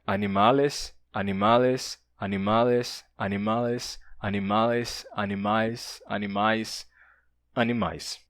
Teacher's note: fez com que o L e o N entre vogais desaparecessem